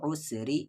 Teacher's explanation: اس را کی آواز کو لائٹ پڑھیں گے کیونکہ را پر زیر ہے